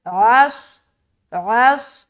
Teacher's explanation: عین بھی نکالنا، صاد میں سیٹی ظاہر ہوگی، موٹا بھی ادا کریں گے